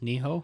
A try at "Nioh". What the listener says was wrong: Yeah, you said Niho, which doesn't make sense. N-I-O-H. It's H-O would be Niho, I guess, but it's N-I-O-H, so I've been saying Neo.